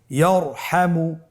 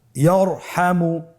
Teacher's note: তাহলে ইয়ারহামু, র সাকিন তার পূর্বে জবর আছে, র সাকিন তার পূর্বে যদি জবর থাকে অবশ্যই রকে পোর করে মোটা করে পড়তে হবে।